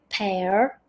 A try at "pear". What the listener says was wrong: I noticed you say the the R pair. Uh, you can do. Yeah. In RP, we generally don't pronounce the R sound much.